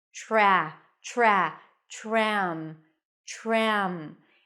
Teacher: when the T appears before an R it actually sounds like a CH sound as in chicken